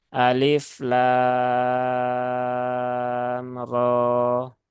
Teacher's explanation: perpindahan antara lam menuju ro Nah itu tidak ada ghunahnya ya ya tidak ada dengungnya · juga mad lazim ya ya padahal ini bukan mad lazim ya rnya itu adalah mad thi'i Ya Mad thi'i Harfi ya Mad thi'i Harfi maka cukup dibaca Dua harakat nah dan perpindahan antara lam menuju ro Nah itu tidak ada